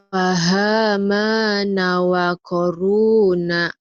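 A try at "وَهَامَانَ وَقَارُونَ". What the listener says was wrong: Mana pahamana? Wa, bukan pa, wa. Wahama, bukan fa tuh, Neng. Wahamana wa qaruna.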